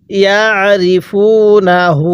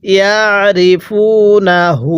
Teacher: আইনটা পড়ার সময় গলার মধ্যে চাপ দিয়ে পড়বেন